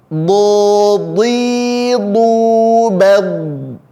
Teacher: penyebutan huruf dad yang sekali lagi tempat keluarnya adalah berada di tepi lidah